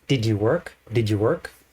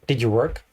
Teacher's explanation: The did is very fast and disappears in the background.